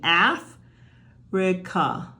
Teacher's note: We slide into a schwa. And the real reason, and we'll talk about this later, is that the stress is at the beginning. Af- -rica. These get shy because this one was stressed.